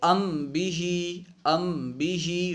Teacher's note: یعنی میم کو اس کے مخرج سے ادا کریں گے لیکن ضعیف ادا کریں گے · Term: اخفاء شفوی